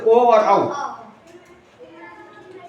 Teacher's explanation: ओ और औ जो है कंठ और ओष्ठ से बोले जाते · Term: कंठोष्ठ